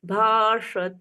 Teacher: यहाँ पर हलंत नहीं है तो त पूर्ण बोला जाएगा